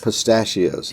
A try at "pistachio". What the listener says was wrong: No, you say it faster. Say it slower.